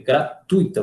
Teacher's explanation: você pronuncia esse U e esse I aqui em um ditongo, não em um hiato, tá? Até mesmo porque se você fizesse em um hiato, você teria que acentuar a palavra gratuita, e gratuita, como não existe, né, consequentemente não tem acento, tá bom?